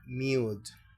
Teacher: Ya para cerrar nuestra última vocal, la U, se pronuncia como IU. Fíjate que la tilde reposa sobre la U, está con mayor fuerza la U, IU